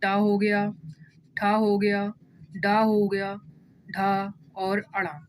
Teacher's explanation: ये बोला जाता है आपका मूर्धन से